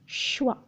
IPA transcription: ə